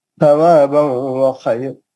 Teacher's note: ثوابا میں تنوین کا ادغام مع الغنہ حرف واو